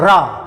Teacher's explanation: रा कहते समय देखिए जिह्वा का अगला भाग थोड़ा मुड़ करके कंपन करता, वाइब्रेशन करता है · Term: प्रकंपित